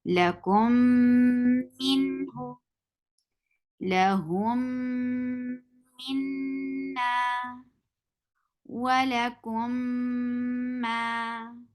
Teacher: the first one Meem will merge into the second Meem completely. So and you will apply gunna. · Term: idgham shafawi